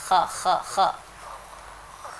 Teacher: حلق کے بالائی حصے سے. ہاں جی حلق کے بالائی یعنی حلق کا جو شروع والا حصہ ہے منہ کے قریب ہے وہاں سے